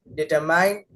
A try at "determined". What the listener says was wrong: ये वर्ड है डिटरमिन्ड, डिटरमाइंड नहीं, डिटरमिन्ड।